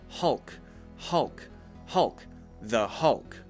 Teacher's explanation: I'm actually bringing my tongue up behind my teeth